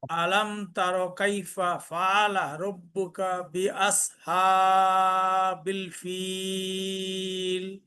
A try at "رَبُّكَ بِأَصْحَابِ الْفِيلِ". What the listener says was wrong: রব্বুকা মোটা হবে বিআস মোটা হবে